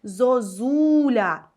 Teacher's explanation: наша о буде наближено до у бо наступний склад з буквою у